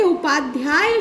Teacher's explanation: उपाध्याय शब्द के उच्चारण में जो ध्या है इस पर अधिक बल रहता है